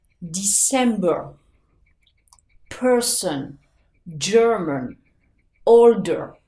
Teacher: vous n'allez pas faire le son R, comme on aurait tendance à le faire en français. Vous allez faire le son toujours le son schwa.